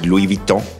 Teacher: The S is silent. The N is quasi-silent because it's nasal